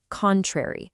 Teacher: the pronunciation is contrary, strong on that first syllable